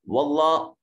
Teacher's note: جلالت کا ما قبل مفتوح ہے، اس وجہ سے اس کو موٹا اور پر کر کے پڑھا جائے گا